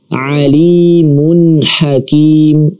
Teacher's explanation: tanwin bertemu dengan huruf ha. Maka tanwin di sini kita baca jelas.